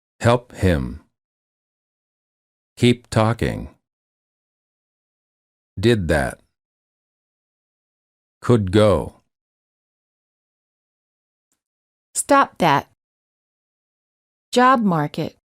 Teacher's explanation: Final stop followed by another consonant. The final stop is held when the next word within the same sentence is another consonant.